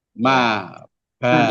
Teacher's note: Maksudnya 2 bibir, ini bibir atas dan bibir bawah itu bertemu, ditutup. Maka baca ma seperti masih terbuka ma. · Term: asy-syafatani ma'an